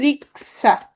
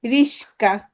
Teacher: দন্তস্ব আর ক তাদের স্থান বদল করেছে, বিপর্যয় ঘটেছে, তাদের মধ্যে এক্সচেঞ্জ হয়েছে, রাইট?